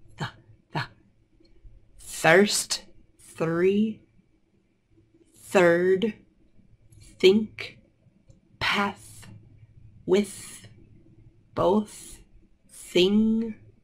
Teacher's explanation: notice when I say th the tongue is out